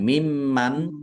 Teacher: Meskipun nunnya tidak tampak, tetapi min mim tasdid itu dibaca ghunah atau mendengung. Tahan biar tampak mendengungnya.